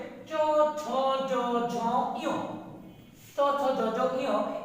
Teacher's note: এই পাঁচটা ধ্বনির নাম হচ্ছে তালব্য ধ্বনি, অর্থাৎ তালুর সাহায্য লাগে